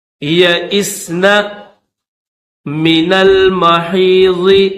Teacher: نون کو لام کے ساتھ ملائیں گے